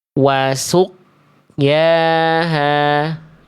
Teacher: Yang A salah karena terputus. Karena tidak memantul. Tidak memantul sama sekali qafnya. Karena tidak dipantulkan, tidak dikolkolahkan.